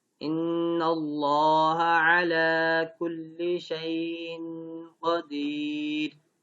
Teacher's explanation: موٹا نہیں کرتے لام کو، نرمی سے پڑھ جاتے ہیں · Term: لام جلالہ